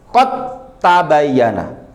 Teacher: Karena dal sudah masuk ke huruf ta, maka dal itu dianggap hilang dan taknya dikasih tasydid. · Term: idgham